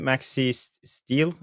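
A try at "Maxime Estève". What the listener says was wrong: It's spelled E-S Steve. So it's Steve, but with an E to begin with instead of Steve.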